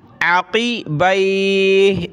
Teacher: قاف کو موٹا کریں گے عین کو گلے سے نکالیں گے عقیبی عین زبر ع قاف زیر قی با یا زبر بی